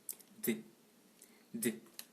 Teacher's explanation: Orale, occlusive, dentale, sonore.